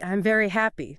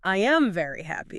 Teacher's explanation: We don't say every single vowel. So instead of saying the full I am, we just smash it together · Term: contractions